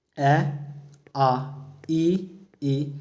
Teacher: जिन स्वरों का उच्चारण करते समय होठ गोल नहीं होते। उन्हें अवृत्ताकार स्वर कहते हैं।